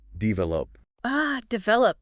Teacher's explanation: The stress pattern was just a little bit off. Try putting the stress on the second syllable.